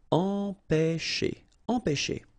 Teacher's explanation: Okay, remember, accent circumflexe on the top of E here goes like E. All right, nasal here, en, pe, and then you've got this CH and it produces this SH sound